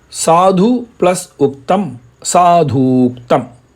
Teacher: Second words first letter is U. Again, both are short vowels. So U plus U both merge and become U. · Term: one long vowel